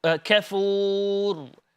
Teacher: With the letter ra, there is a full mouth pronunciation.